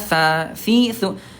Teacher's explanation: huruf sa ini kan tempatnya ujung lidah disentuhkan dengan ujung gigi seri atasnya